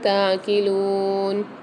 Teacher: تعقلون میں عین کی آواز واضح ہونی چاہیے، حلق کے درمیانی حصے سے ادا ہوتا ہے